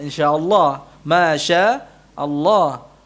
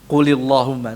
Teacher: lam lafzul jalalah yang didahului oleh kasrah dibaca tarqiq tipis